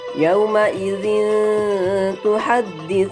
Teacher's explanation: cara bacanya yaitu harus disamarkan tidak dengung dan tidak pula jelas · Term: ikhfa Haqiqi